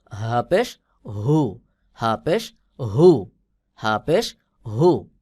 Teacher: হবে যেমন হা পেশ হু হা পেশ হু আর এটা হলো হলকের শুরু থেকে মোটা করে উচ্চারণ হবে